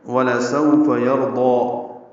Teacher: وَلَسَوْفَ يَرْضَى واو لام جلدی، سو واولین ہے، ہونٹوں کو آگے لائیں گے، نا تمام گول کریں گے، نرمی سے پڑھیں گے · فا کو جلدی پڑھنا ہے. یرضا میں را پر ہے اور ضاد بھی پر ہے، ضاد کو دو حرکات لمبا کریں گے